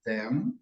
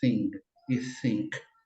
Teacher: um TH vozeado, como a gente tem, por exemplo, em them, e outro TH desvozeado, que é como a gente tem em thing e think também